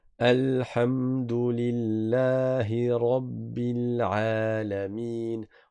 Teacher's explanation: Le ra il est emphatique.